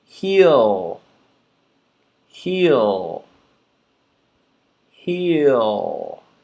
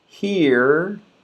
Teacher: Now we have to listen for the L ending, not the R